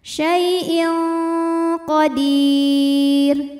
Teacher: tanwin dibunyikan samar-samar siap-siap menuju qaf disertai bunyi dengungan. Dengungnya besar ya karena qaf makhrajnya jauh dari nun. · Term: ikhfa